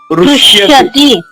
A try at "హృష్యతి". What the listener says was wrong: హృష్యతి. కు అంటున్నాం. కు అనకూడదు. హృదయములో హృష్యతి అనాలి.